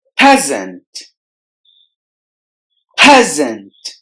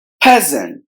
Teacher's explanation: the letter s in the middle must be replaced with the z sound